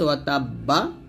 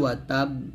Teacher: এখানে আছে ওয়া তাব্বা, তো ওয়াকফ ধরলে ওয়া তাব, এরকম উচ্চারণ করতে হবে।